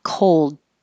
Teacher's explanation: you have to hold the L position for a longer duration than you think you need to probably so that the L can be heard